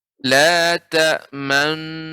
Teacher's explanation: harokat fathah pada nun yang bertasydid dibaca dhammah yang terbuang dengan isyarat bibir yang dimonyongkan. Jadi dibaca tapi dimonyongkan. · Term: ismam